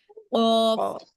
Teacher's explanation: অফ হচ্ছে মোটা আওয়াজে ধাক্কা সহকারে পড়তে হবে।